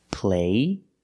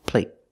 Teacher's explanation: The stop T makes the vowel shorter.